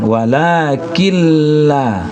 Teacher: Digabung iya, maka ini kanlah yang disebut dengan idgham bila gunna. Digabung iya tapi tidak didengungkan.